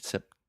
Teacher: I'm really aspirating, which means I'm breathing air out of my mouth and going t, making that pop sound. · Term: true T